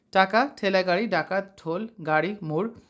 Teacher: এবং তালুর মাঝখানে যে উচ্চ অংশ থাকে তার নাম হচ্ছে মূর্ধা যেসব ব্যঞ্জন ধ্বনি উচ্চারণের সময় জীভের ডগা মূর্ধর সঙ্গে লেগে বায়ুপথে বাধা সৃষ্টি করে সেগুলোকে মূর্ধন্য ব্যঞ্জন বলে